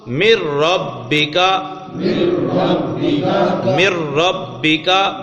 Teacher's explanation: تو اب ادغام ہوا مر ربکا، مر ربکا، نون پڑھا تو نہیں جا رہا نا، نون کا را میں ادغام ہو گیا